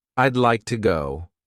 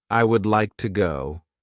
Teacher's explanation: we're cutting off all the sounds in the word would except for that final D